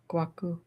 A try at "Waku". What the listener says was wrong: Waku. G silent.